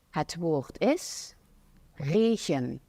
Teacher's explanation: she has the accent where the R is like the guttural R, where it's like regen instead of regen.